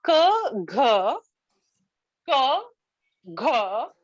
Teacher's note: it is a plosive because there is a complete stop affair and then an explosion expulsion of air it is velar